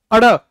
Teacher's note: उत्क्षिप्त व्यंजन अड़, वो कैसा होगा? अल्प प्राण, यानी इसको बोलते वक्त आपकी प्राणवायु कम लगेगी